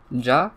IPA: dʒ